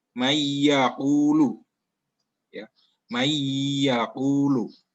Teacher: Jadi apabila nun mati atau tanwin bertemu salah satu huruf ini, ya huruf tadi yang 4 itu, maka harus dibaca dengan melebur dan dengan dengung. Contohnya, ini contohnya ada huruf nun mati bertemu dengan huruf ya. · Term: idgham bihunna